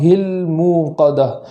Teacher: الموقدہ میں لام کو جو جزم ہے اس جزم کو متحرک ہو جانے سے بچانا ہے، نار اللہ الموقدہ ایسا نہ ہو بلکہ نار اللہ الموقدہ۔